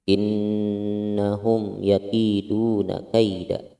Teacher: nun gunnah, hukumnya gunnah ditahan selama kita memanjangkan mad tabi'i, mau satu alif atau dua huruf.